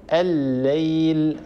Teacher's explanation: الليل، أيضا هنا اللام الأولى لام التعريف أدغمت في اللام الثانية المتحركة فصار النطق بلام مشددة